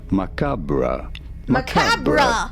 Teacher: the French one in the way that they say Macabre Macabre with an emphasis on the second syllable